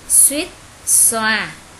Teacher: hai âm đầu đều là anh sợ à ở trên nên chúng ta đọc xuýt xoa chứ không cong lưỡi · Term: âm sờ